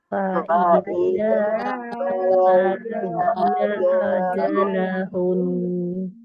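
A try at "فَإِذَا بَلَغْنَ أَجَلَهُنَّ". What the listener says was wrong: Nah, ini di akhir kata tetap dia harus dibaca ditahan ya, jangan sampai ajalahun.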